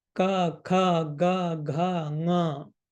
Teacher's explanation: you will realize that your jivha or your tongue is touching the guttural portion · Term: gutturals